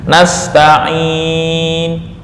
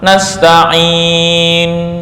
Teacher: Kalau raum itu membaca harokat akhir karena saking pelan seolah-olah dibaca dengan sukun.